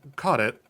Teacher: The CK comes out quite like a H, very soft D, and then the T gets stuck on the tip of your tongue.